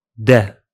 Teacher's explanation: Just drop the initial ha sound of the Levantine forms. So هذا becomes da after dropping the ha at the beginning.